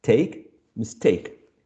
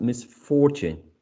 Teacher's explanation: the prefix miss is not attracting the um stress